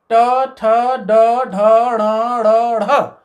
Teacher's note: मूर्धन्य उच्चारण वर्णों के उच्चारण में अग्र जिह्वा यानी आगे की जिह्वा जो है वो दांत के पीछे जो उभरा हुआ पोर्शन है उसको स्पर्श करेगी, उसको बोलते हैं मूर्धा।